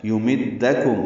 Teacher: یمدکم میم کو دال سے ملائیں گے، دال جلدی پڑھیں گے